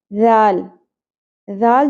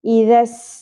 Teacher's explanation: ذال جو حرف ہے وہ بہت نرمی سے ادا ہوتا ہے، سیٹی اور بزنگ ساؤنڈ نہیں آنی چاہیے